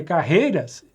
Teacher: carreiras, o ditongo é decrescente, eu tenho vogal e semivogal